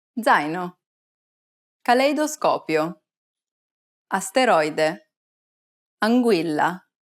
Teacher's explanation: When a vowel is followed by an I, the sound glides and kind of merges. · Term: diphthong